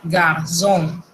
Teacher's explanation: eso se pronuncia como una Z. Y déjenme decirle que esa Z es sonora. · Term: cedille